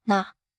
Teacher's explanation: Tongue taps up, gentle nasal.